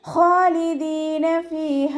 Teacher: നാവിൻ്റെ ബാക്ക് നന്നായിട്ട് മുകളിലേക്ക് പൊക്കി കൊടുത്തിട്ട് തഫ്ഹീം ചെയ്യുക.